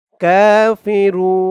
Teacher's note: এখানে অকফ করার কারণে পেশের পরে ওয়াও সাকিন এক আলিফ টানটা তিন আলিফ টান হয়ে গেছে রু বলে তিন আলিফ টান দিয়ে এই নুন কে ধরতে হবে